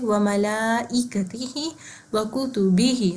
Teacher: مجہول نہیں پڑھنا, پراپر زیر کے ساتھ ادا کرنا ہے · یا ساکن سے پہلے زیر ہے, تو ہم ادھر بھی ہم 2 کاؤنٹس دیں گے, یعنی 1 الف کے برابر لمبا کریں گے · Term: کھڑی زیر